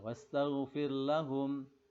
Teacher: ra'i tarkik soalnya sebelumnya berharokat kasrah